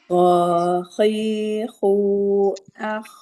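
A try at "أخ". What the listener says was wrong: Nah, alirkan Bunda, jangan terputus. Alirkan. Akh, akh, akh, akh. Panjangkan.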